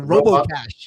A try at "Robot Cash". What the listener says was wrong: Robot. No, it's 2 separate words. It's not Robo. Otherwise, there's a T. Pronounce the T. It's not a silent T. Robot Cash, like your like your cache in your browser.